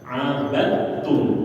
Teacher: ketika ada huruf Dal bertemu dengan ta dalnya mati tanya hidup dalnya enggak usah dibaca langsung dimasukkan ke huruf ta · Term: idgam mutajanisain